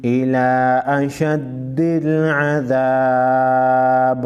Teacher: زیر بی عذاب الى اشد العذاب وقف کی صورت میں با ساکن پڑھا جائے گا با ساکن پر قلقلہ کرنا ہے